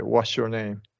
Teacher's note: If it's S followed by Y, then it's going to be sh.